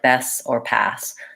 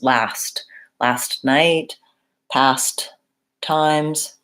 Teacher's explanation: there's a aspirated T sound we really do hear those T's